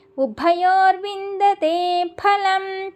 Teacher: ఫలంలో సాంస్క్రిట్లో ఫా అనే పదం ఉండదు, ఫాని ఫా అని చదవాలి. రెండు పెదాలని బిగబట్టి వదిలితే మనకి ఫా అనే పదం వస్తుంది